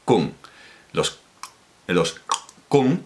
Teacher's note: con un clic retroflexo, no un chasquido, sino un clic retroflexo